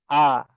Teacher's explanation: Hamzah pertama dibaca dengan jelas jahr